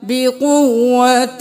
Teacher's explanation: پیش با قوة زبر با قوة بقوة نہیں کرنا قوة بقوت تنوین ہے غنہ کریں اور تا کو واو کے ساتھ ملائیں